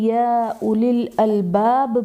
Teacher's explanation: یا پر کھڑا زبر ہے جو کہ الف مدہ کے قائم مقام ہے، اس لیے اسے ایک الف یعنی 2 حرکات کے برابر کھینچ کر پڑھیں گے